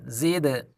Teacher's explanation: دال قلقلہ ہے اسی لیے اس کی مخرج میں جنبش پیدا کرنی ہوگی